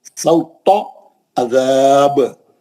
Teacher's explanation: फसब्ब अलैहिम रब्बुका सौता अज़ाब, सौता बोल के पतला ते नहीं पढ़ना कभी भी, मोटा ते पढ़ना। सौता, तो गोल मुंह से मोटा, सौता अज़ाब।